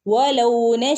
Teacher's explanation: രണ്ടു പദത്തിൽ അല്ല ഒറ്റ പദത്തിൽ ഇവിടെ നമ്മൾ ദീർഘിപ്പിക്കേണ്ട അളവ് എന്ന് പറഞ്ഞാൽ നാലോ അല്ലെങ്കിൽ അഞ്ചോ ഹറക്കത്തിന്റെ അളവിന്റെ അത്രയും ദീർഘിപ്പിക്കണം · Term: മദ് മുത്തസിൽ